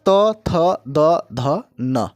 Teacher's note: जिस वर्ण का उच्चारण के लिए हम लोग दांतों में स्पर्श होता है, हवा दांतों में टकराती है या जीव जो है दांतों से टकराता है, उसे क्या कहता है, दंत्य कहा जाता है। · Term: दंत्य वर्ण